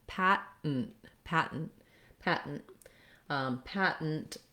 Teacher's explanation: So basically it sounds like a very short N. The two T sounds are made by lifting the tongue, sealing off the air, but not releasing. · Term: stopped T